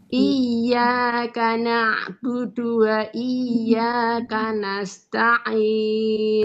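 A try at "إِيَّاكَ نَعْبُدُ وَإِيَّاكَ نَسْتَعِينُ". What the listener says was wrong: Nah, yang ini yang sin tadi jangan putus, Bu. Wa iyyaka nasta'in.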